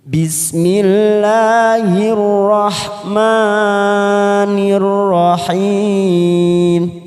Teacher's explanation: Ma itu kepanjangan lebih dari dua